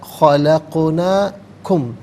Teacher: خلقنا میں قاف ساکن ہے لیکن یہاں قلقلہ ہوگا، آواز لوٹتی بھی محسوس ہوگی